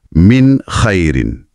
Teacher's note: bunyi n pada min tu sangat jelas, tajam. Tak ada langsung dengung yang dipanjangkan. Bunyinya betul-betul macam infografik tu tunjuk lurus dan tanpa halangan. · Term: Izhar, izhar